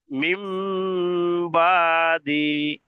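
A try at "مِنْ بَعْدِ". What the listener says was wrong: টান হয়ে যাচ্ছে, বা দি, টান হয়ে যাচ্ছে, বা দি, বা দি, মিম বা দি।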